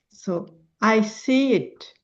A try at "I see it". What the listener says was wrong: I'm not hearing enough movement into silver. I'm hearing I seat almost like it. So I want to hear another syllable. I see it. I see it.